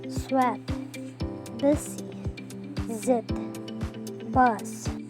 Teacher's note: The air is forced through the alveolar ridge and the tongue. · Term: fricative